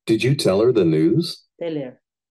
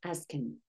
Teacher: In speaking, we often do not say the first sound of him, her, and them.